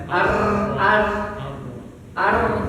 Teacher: bergetar cuman enggak boleh bergetar dari dua getaran